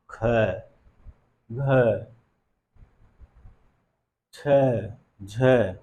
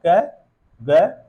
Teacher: हकार जैसी ध्वनि का हमें साउंड सुनाई दे रहा है, ध्वनि सुनाई दे रही है। लेकिन वही जब हम लोग कर रहे हैं क, ग, अंग, नहीं, हकार जैसी ध्वनि नहीं आ रही है। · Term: महाप्राण ध्वनि